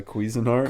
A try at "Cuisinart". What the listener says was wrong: Cuisine Art it's not cuisin that sounds Cuisine yeah cuisine not cuisin